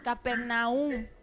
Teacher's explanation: se escucha un acento ahí en la u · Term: acento tácito